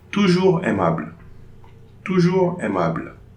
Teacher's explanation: No liaison between the S and AI.